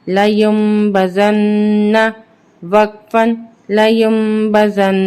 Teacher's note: نون کو ہم سختی کے ساتھ پڑھیں گے، جماؤ کے ساتھ پڑھیں گے کیونکہ نون مشدد ہے، اور غنہ کریں گے